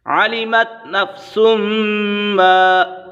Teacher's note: یہاں پر میم مشدد ہے، میم مشدد میں ہمیشہ غنہ ہوتا ہے